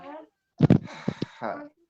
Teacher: Makhrajnya itu dari tengah-tengah tenggorokan.